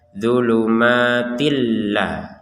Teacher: tanwin bertemu lam kita masukkan ke lam menjadia gitu bu bukan Tin lagi tapi di baca zulumatillah dan